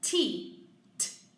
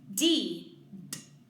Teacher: I can feel the vibration of my vocal cords when I say D. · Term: voicing